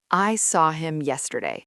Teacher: The default stress would fall on yesterday, right? Because it's the final content word. Correct. That's just a neutral statement of fact, no special meaning.